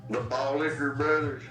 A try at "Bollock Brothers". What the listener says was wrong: The Bollock Brothers, like balls. Not ball. Yeah, just balls, not liquors.